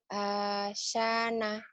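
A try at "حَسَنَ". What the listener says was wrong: Ha, bukan A.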